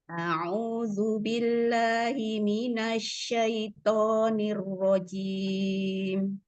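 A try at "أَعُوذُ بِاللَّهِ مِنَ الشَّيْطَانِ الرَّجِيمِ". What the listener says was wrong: diulang lagi Bunda. A'udzu, monyongkan lagi. A'udzu. Ketika sinnya, ketika bertemu linnya dialir minasyaitonir.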